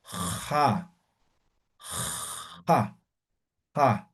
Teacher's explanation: Igualito que la J, pero raspando